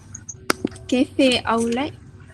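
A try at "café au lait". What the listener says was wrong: Very good. Cafe au lait. We don't pronounce the T.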